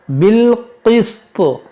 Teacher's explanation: یہاں پر دیکھیں طا ہے تو رکیں گے تو اس کو طا کو بھی ساکن کریں گے, اور جب طا ساکن ہوگا تو اس میں قلقلہ ہوگا